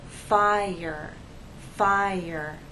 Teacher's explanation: If you listen closely, there is the Y sound that connects the 2 vowels.